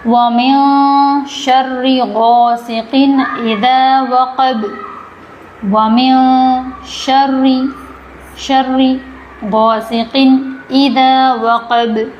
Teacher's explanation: وقب یہاں پر جیسے فلق، خلق، وقب یہ حروف قلقلہ ہے آخری والے، تو آواز یہاں پر ٹکرائے گی